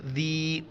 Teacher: سین با پہ صبح، سبحان الذی، ہا کو گلے سے ادا کرنا ہے اور اس کے اوپر کڑا زبر ہے، ایک الف کی مقدار اوپر کھینچنا ہے، نون کو لام کے ساتھ ملائیں گے، سبحان الذی، ذی، ذال کے وقت زبان باہر نکالنا ہے